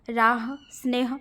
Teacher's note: ह सघोष है पर शब्द के अंत में सामान्य रूप से इसका अघोष उच्चारण हो जाता है